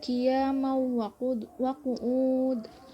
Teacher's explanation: Idgham bi gunnah karena mim berharokat fathah tanwin bertemu dengan waw. Harokat tanwin dileburkan dan disertai dengan dengung